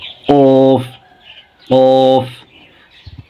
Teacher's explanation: উচ্চারণের স্থান জিহবার গোড়া উপরে তালুতে লাগিয়ে মোটা হরফ